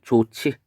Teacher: 그래서 좋지라고 했을 때는 히읗과 지읒이 만나서 치읒이 됐습니다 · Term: 거센소리 되기